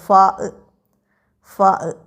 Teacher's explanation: താഴെ ചുണ്ടും മേലെ മുൻപല്ലുകളും